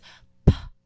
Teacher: say so the P sound isn't P or P it's p you push your lips together and you express air it is the same exact movement as the B sound but